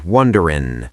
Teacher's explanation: Notice I dropped the G.